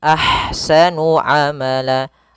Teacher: Kemudian pada lafal ahsanu, di sini ada ha yang berharakat sukun maka dinamakan dengan ha hams. Alirkan nafasnya, kemudian baru dibaca dengan sa-nya.